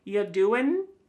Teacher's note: Listen to that G at the end. Ya doing, it's gone.